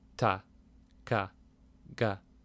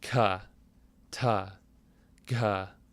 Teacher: just one is breathless and one is breathy